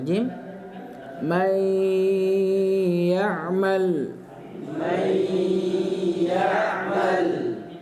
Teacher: dileburkan nun sukun kepada huruf setelahnya darianmu kemudian Apa digun digunah dibaca dengan didengungkan Ya dengungan itu bisa kita ketahui ya dengan menyentuh hidung kita ini karena dia keluarnya dari sini kemudian dibacanya itu dengan ditahan kurang lebih du harakat dan beliau